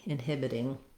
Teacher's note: this t again becomes more of a flap that sounds more like a d